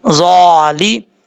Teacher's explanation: ظا کے اوپر کھڑا زبر ہے, ایک الف کی مقدار لمبا کر کے پڑھا جائے گا